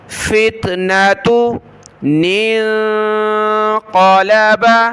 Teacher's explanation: آگے چھوٹے نون کو بڑے نون کے ساتھ ملائیں گے، اور یہ نون ساکن کلرفل ہے، ناک میں آواز پیدا کریں گے